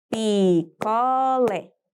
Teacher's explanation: Portanto, lé será a sílaba tônica.